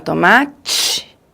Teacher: começa com bloqueio e depois tem a fricção